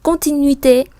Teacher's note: u và i mình đọc là uy, âm i